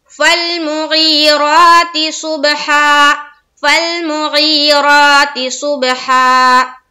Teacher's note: सुबह में कलकला करेंगे, बा के ऊपर जज्म है, स्वाद को बा से मिलाते हुए आवाज को टकराएंगे और हा में आयत करेंगे।